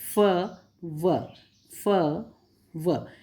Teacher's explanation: बोलने पर जो नीचे का होंठ है वो ऊपर के दांतों को टच होता है। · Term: लेबियो डेंटल